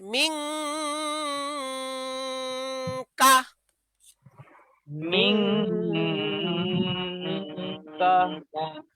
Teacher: নুনকে নাকের ভেতর লুকাইতে হবে। নাকের ভেতর লুকাইলে নুনটা উচ্চারণ হবে বাংলা অনুসারের মতো। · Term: ইকফা